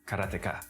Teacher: there's no stress on any syllable